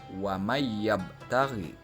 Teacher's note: huruf nun dileburkan ke dalam huruf ya